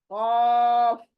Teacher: आपका फिर कफ क एकदम सॉफ्ट आना चाहिए हलक के अंदर से वो नरम हिस्से से तालू ही कहते हैं उसको जहां पर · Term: बड़ी कफ